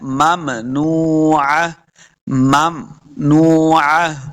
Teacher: واو، واو مد ہے، اس کو دو حرکات لمبا کریں گے، واو کے اوپر اپنے دونوں ہونٹ گول ہوں گے، تب واو کا مخرج صحیح ادا ہوگا